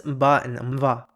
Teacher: the prenasalized consonants /ᵐb/ and /ᶬv/